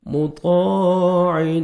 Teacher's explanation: طا کو موٹا کر کے پڑھیں گے، الف مد ہے، 1 سیکنڈ طا کو کھینچنا بھی ہے، الف سے پہلے زبر ہے اور عین کو اپنے صحیح مخرج سے ادا کرنا ہے اپنے.